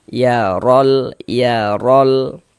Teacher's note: Cuman di sini yang kita temui harokat fathah atau tanda baca fathah. Maka huruf ro-nya dibaca tafkhim, dibaca tebal. Sehingga pangkalisan kita naik terangkat ke atas ketika kita mengucapkannya.